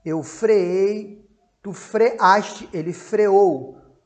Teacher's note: ele não tem o ditongo ei. Ele tem o hiato, o e com a.